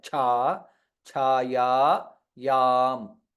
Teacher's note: cha is mahaprana and dirgha · छ इज महाप्राण एंड दीर्घ छा छाया याम ऑल द थ्री लेटर्स आर दीर्घ छाया याम